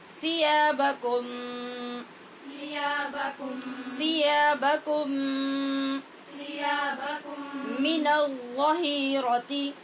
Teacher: میم ساکن کے بعد میم مشدد ہے، اس کا ادغام ہو رہا ہے ادغام شفوی